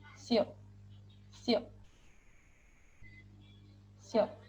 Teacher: lafalkan mirip konsonan s dalam bahasa Indonesia namun dilafalkan dengan badan lidah bukan dengan ujung lidah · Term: suara badan lidah